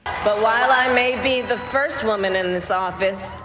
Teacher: everything's kind of flat to stress the word first.